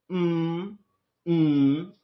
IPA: m